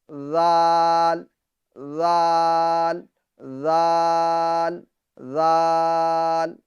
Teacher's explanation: زبان کا سرا اور اوپر کے دانتوں کے اندرونی کنارے سے زال ادا ہوتا ہے، زبان کو زیادہ باہر بھی نہیں نکالنا، یعنی زال، زال یہ غلط ہے، بلکہ تھوڑا سا ہلکا سا نکالے بس، زال، زال، زال، زال، ماشاءاللہ عز و جل۔